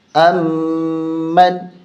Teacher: میم پہ غنہ ہوگا، نون پہ غنہ نہیں ہوگا